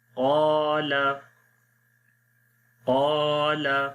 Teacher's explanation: قا موٹا پڑھیں گے، قاف کو بھی اور الف کو بھی. الف سے پہلے زبر ہے، الف کو لمبا کریں گے یعنی الف مدہ ہے.